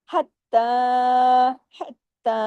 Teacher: जमाओ के साथ और ख को हैवी करना है हत्ता हत्ता ता को बारीक भी ता को खींचना भी है